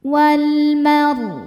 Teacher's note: Kemudian ada hukum alif lam qamariyah sebab alif lam menghadapi huruf qamariyah yaitu mim. Cara bacanya lam dibaca idhar atau jelas. Wal mar. Ra sukun dibaca secara tafkhim karena sebelumnya berharokat fathah.